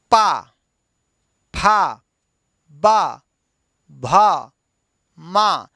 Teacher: होठों का मिलना और मिल करके खोलना